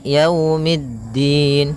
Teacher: Pada lafal yau di sini ada bacaan lin yaitu berupa fathah bertemu dengan huruf wau. Maka yaumiddin kemudian mid langsung ke da.